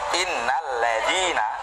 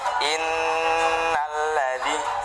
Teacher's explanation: Nun tasydid itu kan bacaan gunnah. Ya, gunnah itu agak lama.